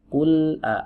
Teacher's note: Huruf lam yang pertama ini bagus, qul tidak ada qalqalahnya.